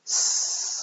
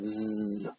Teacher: if s is a fricative without vibrating the glottis, then z is a fricative when you do vibrate your glottis